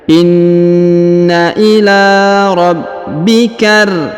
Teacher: Maka ini disebut alif lam syamsiyah. Maka huruf ka langsung sambung masuk ke huruf ra yang bertasdid, ya. Alif lamnya tidak dibaca.